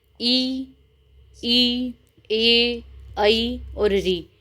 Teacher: ओष्ठ गोल न होकर हल्के से फैल जाते हैं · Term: अवृत्ताकार स्वर